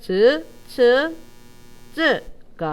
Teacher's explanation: 혀를 완전히 열어버리진 않고 통로를 좁히면서 연단 말이야